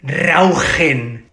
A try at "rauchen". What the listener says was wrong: But it's more with the throat.